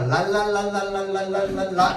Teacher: 혀의 양옆으로 흘러나간다라고 해서 유음이라고 합니다. 혀의 양옆으로 공기가 흘러나간다. · 혀가 윗니에 붙었다 떨어졌다 붙었다 떨어졌다 한단 말이야.